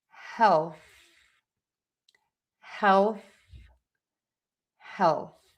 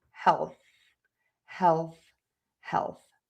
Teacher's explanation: that is the th sound where you really want to stick the tongue out of the mouth and keep the air moving over the tongue.